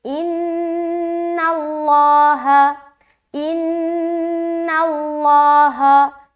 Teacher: لفظ اللہ کے لام سے پہلے زبر آ گیا تو اس کو ہم موٹا کریں گے، اگر پیش ہوتا تب بھی موٹا پڑھتے، لیکن اگر اس نون کے نیچے زیر ہوتا تو ہم اس لفظ اللہ کا لام کو باریک رکھتے۔